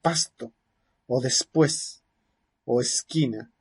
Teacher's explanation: se puede pronunciar como una predorso alveolar fricativa áfona